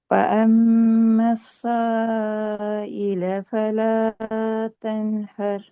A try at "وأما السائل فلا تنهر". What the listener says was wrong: இதுல ஃபலான்னு நீட்டுறதும் சான்னு நீட்டுறதும் ஒரே அளவுக்கு வரையலாது. அப்ப இதுல நாங்க மூணு சேர்த்து நீட்டுவோம். அங்கதான் கொண்ட அந்த நீட்டுற அளவுகள் பிரச்சனை இருக்குது. நீட்டுற அளவுகள்ல பிரச்சனை இருக்குது. அடுத்தது ஆ ஆ என்று வானத்தை நோக்கி உச்சரிக்கிறது பிழை. அலிஃப் எப்போதும் கீழ் நோக்கி உச்சரிக்கப்படணும். ஆ என்று வானத்தை நோக்கி எங்களோட எழுத்து போச்சு தண்டால் அது பிழை. அ வ அம்ம வ அ எங்களோட சவுண்ட் போகுது இப்படி மேலுக்கு போகுது, அது பிழை. அது கீழ் நோக்கி மாறணும்.